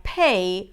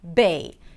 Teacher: They're actually produced in the same manner, but one is voiceless, P, and the other one is voiced, B. So in Arabic, there's only the voiced version, and therefore a word like pay might be pronounced as bay